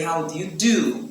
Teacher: if you want to respond, you say, how do you do? With a low tone.